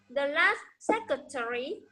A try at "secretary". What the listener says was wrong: Secretary. Terry. Okay, when you say Terry, the stress will be the final sound re, but the stress is sec. Okay, secretary.